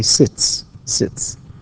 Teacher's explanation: sit is voiceless so I say sits